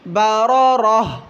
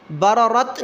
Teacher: اب یہاں بھی ایک بات سمجھیے، گول تا پر جب ہم وقف کریں گے تو ہا پڑھیں گے، گول تا وقفاً کی صورت میں ہا پڑھا جائے گا. برارہ بررت نہیں پڑھیں گے، وقفاً برارہ.